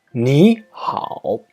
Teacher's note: PI 3 it means a third tone plus another third turn the first third tone is pronounced as a second tone for example me how means hello it sounds like me how